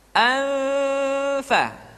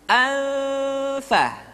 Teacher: nun mati tanwin ketika digunakan posisi makhraj sudah berada pada huruf Fa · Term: ikhfa